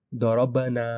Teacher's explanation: با پر جزم ہے تو ہم قلقلہ کریں گے